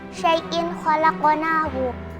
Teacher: Yang pertama, izhar halqi pada kata syai'in khalaqnahu, karena ada kasrah tanwin bertemu dengan huruf kha, dibaca jelas